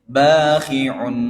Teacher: Ain yang ditanwin un bertemu nun yang bertasdif berarti apa? Dengung lagi ya. Nah, idgham bighunah.